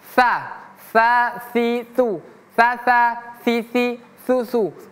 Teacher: ujung lidah bertemu gigi seri atas